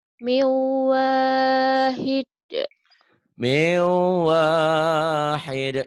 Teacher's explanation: Ini hukum nun mati atau tanwin ketemu waw idgham bi gunnah.